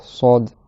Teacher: ça fait sod, il y a beaucoup d'air qui sort, ça siffle beaucoup, parce que le conduit est plus étroit. · on garde le bout de la langue au même endroit exactement, sauf qu'on va gonfler l'arrière de la langue vers le haut. Et donc ça va faire comme une sorte de toboggan, et comme la langue prend plus de place dans la bouche, ça nous force à faire O plutôt que A. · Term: emphatique